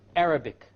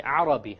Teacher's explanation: The English R comes from the middle of the tongue, and the Arabic ra comes from the tip of the tongue.